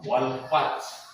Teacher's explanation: Yang kedua ta mabsuta, karena ta huruf mati berubah suaranya menjadi h itu h wal fath.